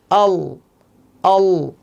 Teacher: তো লামের ক্ষেত্রে 8 দাঁতের গোড়া সংলগ্ন তালুর সাথে লাগে